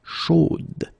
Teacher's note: So here you pronounce the final d, whereas in the masculine form you don't pronounce it.